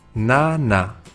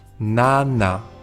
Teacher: esta letra es que no se hace igual que en español cuando hacemos la n solemos tocar con la lengua la parte de arriba de la boca pero en coreano se tocan los dientes la pronunciación es distinta pero tampoco se nota mucho escucha bien